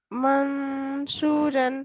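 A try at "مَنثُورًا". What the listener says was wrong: देखिए इसको माँ, शू नहीं है, सा है वैसे। मासूरन, देखिए, आपने माँ जब कहा, आपकी जबान किधर थी? हाँ ठीक है, जब आप मासूरन कह रहे हैं सही है।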